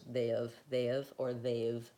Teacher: it's a reduced vowel, it's unstressed, they've, or they've, that we don't want that pure ah or incorrect ah, correct ah or incorrect ah vowel for have.